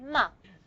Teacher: Ma is a voice sound because there's a vibration in the vocal force inside the larynx. Okay? So, ma is a voiced sound.